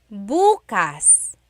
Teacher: emphasis is on the first syllable that means tomorrow.